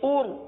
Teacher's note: حمزہ را پیش ار. اس را کو پر پڑھیں گے کیونکہ را ساکن سے پہلے پیش ہے